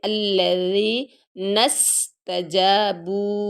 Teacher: ثا، ذال، وا، یہ 3 نرم حروف ہیں، اس میں سے ذال ہے، سیٹی کے بغیر پڑھیں گے